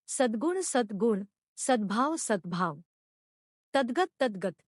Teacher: घोषीकरण संधी नियम अघोष व्यंजनाचे घोष व्यंजनात रूपांतर होते